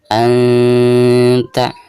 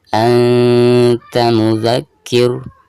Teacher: Nah, di sini ada nun sukun lalu berhadapan dengan salah satu huruf ikhfa, di sini huruf ta ya, dan ini termasuk ikhfa akrob ya. Maka cara membacanya itu harus disamarkan ya, disertai dengan gunnah. Namun tingkat kesamarannya itu lebih tinggi daripada gunnahnya, itu ikhfa akrob ya.